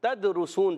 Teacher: تدرسون، تا کو دال سے ملانا ہے، دال ساکن ہے، کلکلا ہوگا، آواز لوٹ کر آئے گی